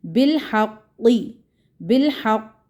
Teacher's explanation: यहाँ पे कलकला की कुछ जो शिद्दत होगी वो अकबर किस्म का कलकला होगा, कुबरा कलकला जिसको भारी मोटा यानी कि कलकला कहते हैं ना, बड़ा कलकला, वो होगा।